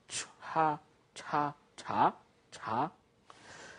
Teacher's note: the sound of the CH, I said it's almost like in chip, but it should be aspirated. It's harder.